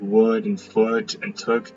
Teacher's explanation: This is a near close near back rounded uh vowel and is the closest vowel I can that is used in these English words.